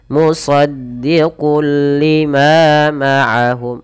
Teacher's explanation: Idgham berarti menggabungkan; Cara membacanya adalah dengan menggabungkan tanwin ke dalam huruf lam. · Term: idgham bila ghunnah